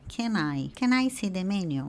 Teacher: A pronúncia aqui a gente pode falar como se essas duas palavras fossem somente uma palavra. Então, aqui a pronúncia vai ser can I.